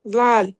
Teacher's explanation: दाल को पतला करके बारीक करके पढ़ेंगे।